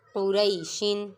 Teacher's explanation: قاف پیش قو، را یا زبر غی، قوری، شین دو زیر شن، قوری شن، قاف متحرک، را پہ یالین اور شین منون۔ قاف کو پر پڑھیں گے کیونکہ یہ حروف مستعلیہ میں سے ہے